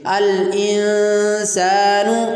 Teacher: تو نون ساکن جو ان میں ہے اس کے بعد حرف اخفاء سین آ رہا ہے، اس لیے یہاں پر بھی ہم اخفاء کریں گے اور نون کی آواز کو ناک میں لے جا کر چھپائیں گے